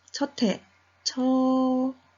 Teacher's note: 시옷이 디귿으로 바뀐 다음 디귿과 히읗이 만나게 되는 거죠. 디귿과 히읗이 만났더니 둘이 합해져서 티읕이 되었습니다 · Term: 격음화